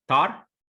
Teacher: unaspirated t sound at the beginning